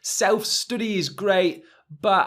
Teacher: the study is a schwa sound actually in the middle